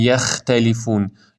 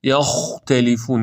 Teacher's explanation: خا پشت زبون کوچیک جزء حروف حلقیه البته درشت هم هستش باید درشت ادا بشه